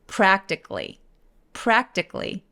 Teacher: A를 완전히 무시해버리고 K-L-Y처럼 발음합니다